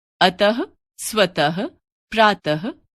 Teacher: हिंदी में विसर्ग का उच्चारण ह के रूप में होता है